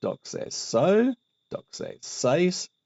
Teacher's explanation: Now, when it comes to the weak aorist subjunctive active of doxazo, we have doxaso, doxasase, etc. So we have that z plus sigma just ending up as sigma